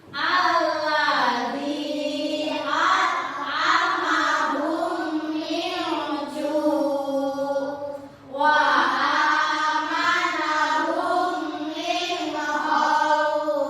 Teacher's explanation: Cara membacanya seperti menyuarakan mim rangkap atau mim tasdid. Jadi seperti rangkap atau double ya anak. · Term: idgham mimi